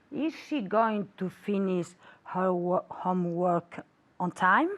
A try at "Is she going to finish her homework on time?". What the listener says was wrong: Muy bien. Ahora más relajada.